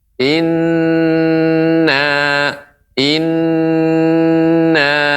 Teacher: keliru atau kurang tepat dalam pengucapannya yaitu ketika mengucapkan Inna ya ini Nun yang bertasydid sehingga tidak terburu-buru Ina Apa Ina kurang tepat akan tapi harus diberi tempo Inna